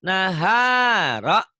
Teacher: Nanya pendek. Yang panjang tengahnya. Naharo. Yang panjang tengahnya doang.